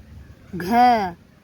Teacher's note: ख को आप एक बार बोल के देखें तो आपकी जो मुख से वायु निकलती है वो ज्यादा निकलती है। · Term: महाप्राण